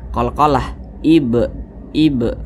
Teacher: dengan huruf ba kemudian dia sukun tanda sukun seperti ini maka huruf ba bacanya itu dipantulkan qah ib ib mantul seperti itu tapi dia tergolong kepada Qalqalah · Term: Qalqalah kecil